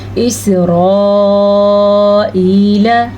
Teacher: را کو پر پڑھنا ہے اور مد کو کھینچ کے پڑھنا ہے 5 حرکات عربیہ کے برابر